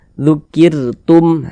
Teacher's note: maka huruf ro-nya dibaca tarkik, dibaca tipis. Nah, yang kita tipiskan, jangan naik terangkat ke atas pangkal lidah kita, tipis saja.